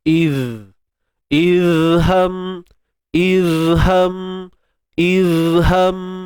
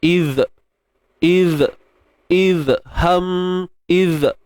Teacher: untuk huruf zal yang dalam keadaan sukun ini, apa yang kita nak kena tekankan ialah sifat rakhawah je lah, iaitu suara yang terlepas. Idh. Idham.